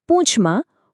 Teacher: આ અનુસ્વાર ખાલી ઉચ્ચારને થોડો નાસિકા વાળો થોડો સોફ્ટ બનાવે છે